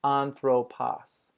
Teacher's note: I'm pronouncing the omicron as sort of a short A sound, anthropos, with a short A at the end.